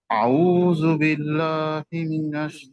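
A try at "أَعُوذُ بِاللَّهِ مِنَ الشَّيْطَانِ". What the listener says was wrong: এই যে না না, শুনেন, আমি আরেকবার বলি আপনাকেও, লাল জিহ্বা বের করতে হবে, আউযু। আর যদি জু বলেন সেটা ঝায়ে চলে যাবে।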